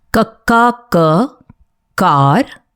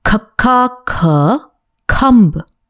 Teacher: The other rule to follow is that in rows 2 to 5, if you look at the second alphabet, they carry the same sound as the previous letter but with aspiration, that is, an extra breath, making a softer sound.